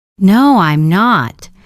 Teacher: Your voice goes down at the end.